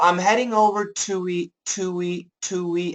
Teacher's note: we do keep the two and we add a w in the middle to kind of link it together